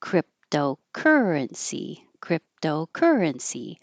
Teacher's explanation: secondary stress is longer but not higher. So currency is the primary. It's higher and longer.